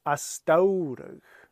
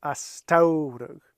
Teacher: this t sounds more like a d